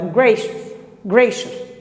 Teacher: Também mantém o S final, porque você faz esse sonzinho bem fraco. Gracious. Você não fala grace ou use, não.